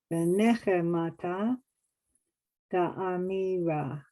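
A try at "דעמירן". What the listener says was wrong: Da'amiran. It's a final nun. A final nun.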